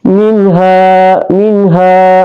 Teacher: nun sukun bertemu dengan H berarti ini adalah salah satu dari huruf ee halq maka dia adalah izhar halq dibaca terang